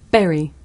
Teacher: when I say Barry my lips are tight together